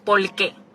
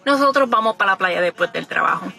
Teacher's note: R's are L's for us, so a word like por qué will actually be pronounced por qué.